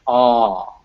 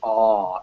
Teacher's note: you can even feel your jaw will open up when you say that, and your tongue will lower and fall backwards. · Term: back open sound